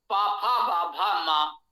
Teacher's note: ये ओष्ठ स्थानीय है, तो इसका उच्चारण आप ओठों से ही कर सकते हैं, उसके बिना नहीं कर सकते।